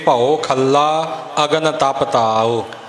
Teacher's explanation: ਖੱਲਾ, ਖੱਖੇ ਦੇ ਉੱਪਰ ਵਜ਼ਨ ਦੇ ਕੇ